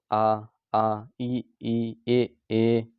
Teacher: जिन स्वरों के उच्चारण में ओठ जो है वृत मुखी या गोलाकार नहीं होते हैं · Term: आवृत मुखी